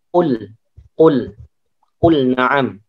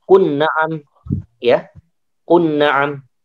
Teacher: wa qulna tidak kunna ya, tapi qulna dijelaskan lamnya.